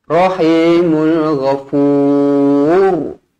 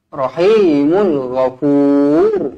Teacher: Ra ni dibaca tebal kerana sebelumnya berbaris depan.